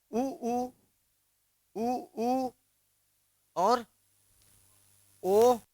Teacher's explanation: होट से हो रहा है होट का गोल होना